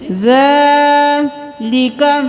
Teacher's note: کھڑی زبر ہے کھینچی، ذالک، حرکات کو جلدی سے ادا کریں، کھڑی زبر کو ایک الف کے برابر کھینچے